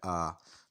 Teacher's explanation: अलिफ़ मुंह के खाली हिस्से से अदा होता है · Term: अलिफ़ की आवाज़